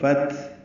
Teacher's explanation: تا ساکن ہے، اس پہ ہمس ہوگا، فتح یعنی سانس جاری رہے گی ، حا وسط حلق سے ادا کریں گے، تنوین کے بعد